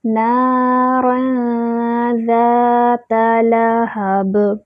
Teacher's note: زا پہ جو ہے وہ الف مد بن رہی ہے، الف خالی اس سے پہلے فتحہ الف مد، 2 حرکات برابر اس کو لمبا کریں گے۔ تا پہ صرف فتحہ ہے، منہ اوپر کی طرف کھولیں گے، تا کو کھینچنا نہیں ہے۔